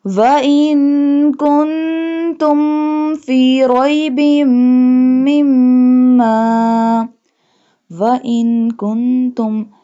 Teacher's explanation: noon both noon have jazm sign, so we do gunna.